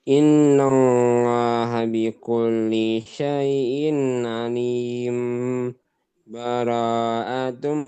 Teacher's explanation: Diulang karena cara yang kedua ini sakta, berhenti saja. Alim, tapi tidak ngambil napas. Alim, kurang lebih 2 harokat baru bilang baro'atun.